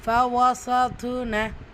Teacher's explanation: வார்த்தையோட இடையில வந்திருக்கிறதுனால கல்கலத்து சுகரா சிறிதாக அசைச்சு ஓதணும்